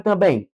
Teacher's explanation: Última, penúltima. Recaiu o acento na última sílaba, é regra de palavra oxítono.